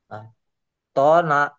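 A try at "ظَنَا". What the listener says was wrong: ada titiknya ini. Zona. Ya. Ada titiknya. Kalau ada nggak ada titik betul toh. Ini ada titiknya jadi zona. Zona.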